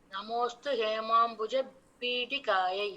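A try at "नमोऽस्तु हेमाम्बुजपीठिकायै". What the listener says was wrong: அந்த டி வந்து டின்னு சொல்லி இருக்கணும். டி பிடி கரெக்டா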